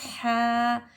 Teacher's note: खड़ा ज़बर को हम 1 अलिफ की मक़दार खींचकर लंबा करेंगे